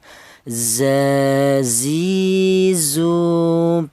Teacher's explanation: berasal dari ujung lidah menyentuh pangkal gigi seri bawah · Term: huruf za